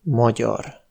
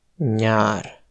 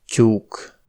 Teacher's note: Les quatre digrammes avec Y représentent des consonnes palatales.